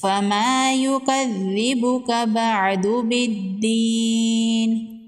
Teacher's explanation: الف مدہ ہے، ایک الف کے برابر کھینچ کے پڑھیں گے،